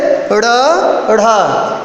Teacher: उत्क्षिप्त का अर्थ होता है फेंका हुआ। इनके उच्चारण में जिह्वा को बहुत तेज से आगे उठा के फेंकते हैं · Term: उत्क्षिप्त व्यंजन